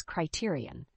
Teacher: the word Criterion has four syllables with the stress on the second syllable